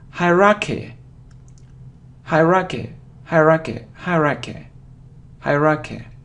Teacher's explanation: So you see that the main stress is on the first syllable